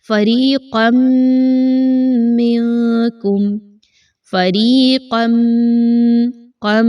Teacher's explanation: یہاں پر نون ساکن اور میم تنوین کا قاعدہ ذہن میں لائیے کہ جب میم آ جاتی ہے تو وہاں پر ادغام کیا جاتا ہے مع الغنہ، یعنی آپ نے یہاں پہ تنوین کی آواز کو میم کی آواز میں ملا دینا ہے، مکس کرنا ہے اور غنہ بھی کرنا ہے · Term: ادغام مع الغنہ